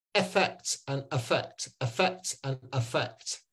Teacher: When we speak quickly, that effect and affect can actually be a schwa, so they end up sounding the same.